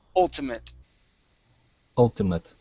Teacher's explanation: the ate at the end is going to be an it sound instead of eight